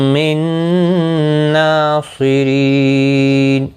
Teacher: نون ساکن کے بعد یرملون کا نون آیا ہے، ادغام مع الگنہ ہوگا، گنہ کے ساتھ پڑھیں گے. نون کے اوپر کھڑی زبر بھی ہے، ایک الف کی مقدار کے برابر کھینچ کر بھی پڑھیں گے.